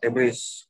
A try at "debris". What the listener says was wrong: Yeah, you actually don't pronounce the S. It's like a silent S, so it's more like debris.